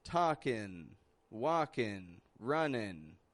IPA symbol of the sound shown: ŋ